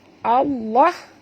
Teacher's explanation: Allah ya, tebalkan pada lam di sini, lam pada lafaz jalalah dibaca tebal ya